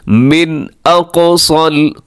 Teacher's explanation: वजाअ मिन अक़सल मदीनति रजुलुन यस्आ, मिन अक़सा, यहाँ पे इजहार हलकी है, नून साकिन के बाद हमज़ा आ रहा है तो अपने गुन्ना नहीं करना, आवाज़ को नाक में नहीं लेके जानी। मिन अक़सल, क़ाफ मोटा है, कलकला भी है, स्वाद भी मोटा है।